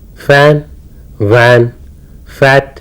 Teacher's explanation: look when you say fur and V you can clearly see the Upper Front Teeth getting on to the lower lip and the lips are in a spread position and not in a rounded position